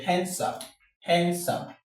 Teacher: the D in this place is silent. D isn't pronounced in the word handsome. Handsome. This here there is no D.